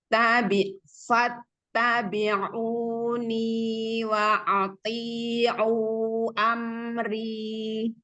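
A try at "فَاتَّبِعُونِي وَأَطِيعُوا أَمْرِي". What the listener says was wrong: Ininya sudah berubah jadi ain. Wa'ati.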